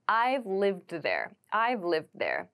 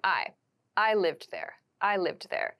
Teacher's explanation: Learners drop this V sound and they say I I lived there · when we say I have lived we reduce the I have to I've